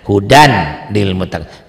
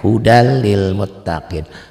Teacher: Dibacanya N-nya hilang jadi L. Hudal lil muttaqin.